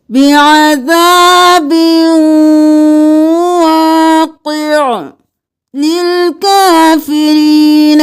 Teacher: عین ساکن ہو جائے گا، قاف کو موٹا پڑھیں گے. ادغام مع الغنہ کریں گے، با کو واو میں مدغم کریں گے غنہ کرتے ہوئے